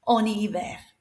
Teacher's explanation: The H here works like a silent H, so we've got a vowel after it, the I · slide it together so that vowel pronounces the N